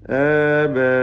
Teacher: അലിഫിൻ്റെ ദീർഘം ബാഇൻ്റെ അലിഫ് മദ്ദ് മുത്തസിൽ വാജിബാണ്. നാലോ അഞ്ചോ ഹറക്കത്തിൻ്റെ അളവിൽ നിർബന്ധമായി ദീർഘിപ്പിക്കണം